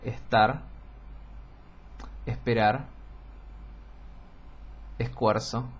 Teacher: ciertas posiciones por ejemplo eh nosotros aspiramos la s antes de consonantes implosiva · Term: la aspiración de la S